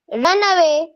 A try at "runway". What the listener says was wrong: read it out Runway not run away Runway